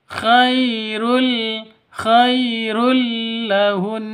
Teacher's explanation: Di sini ada tanwin bertemu dengan lam. Cara bacanya masuk ke lam tanpa dengung. · Khai sifat lin ya, khairul, khai sifat lin, lentur lemes, tidak boleh disentak, tidak boleh dipanjangkan. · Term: idgham bila gunnah